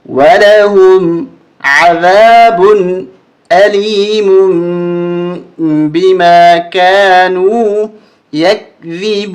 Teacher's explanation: اب میم کے اوپر دو پیشے ہیں اور اس کے بعد با آ رہا ہے، تو اصول اور قانون یہ ہے کہ تنوین کے بعد اگر با آ جائے تو وہاں تنوین کو بدل دیا جاتا ہے چھوٹے میم کے ساتھ